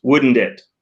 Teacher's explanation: People don't generally pronounce the T in wouldn't.